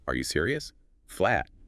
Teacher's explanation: Flat. It barely sounds like a question. But add that little upward flick at the end.